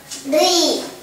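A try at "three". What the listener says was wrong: Không phải tree, bố có bảo con chữ đấy đọc là tree đâu. Con nhìn lại phiên âm đi. Không phải chữ tờ chứ, bố có bảo chữ tree đâu mà con đọc là tree.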